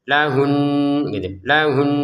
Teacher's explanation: Jadi ada dengungannya yang kita dengungkan di rongga hidung.